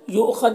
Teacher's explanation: یہاں پر حمزہ ساکنہ ہے، واو کی شکل میں جھٹکا لگے گا